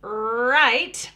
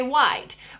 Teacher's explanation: she's working on the R sound, and she tends to make more of a W sound. That's one of those patterns that we see, kind of a W exchange for R.